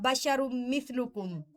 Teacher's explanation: بشر مثلکم میں جو ادغام ہے وہ غنہ کے ساتھ ہے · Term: ادغام بغنہ